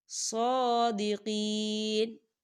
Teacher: یا ساکن ہے، یا ساکن سے پہلے زیر ہے تو یہاں پر یا مدہ ہوگا، دو حرکت کے برابر اسے کھینچ کے پڑھا جائے گا